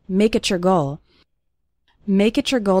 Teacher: when we have a word ending in t followed by the word you or your it often sounds like a ch sound so make it your goal sounds like make it your goal